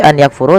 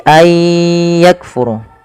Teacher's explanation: memasukkan bunyi Nun kepada huruf setelahnya kemudian disertai dengan gunah · mati bertemu dengan huruf ya dan di sini warnai abu-abu artinya nunnya dianggap tidak ada langsung dibaca ke ya maka sambil dimasukkan ke ya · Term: Idgham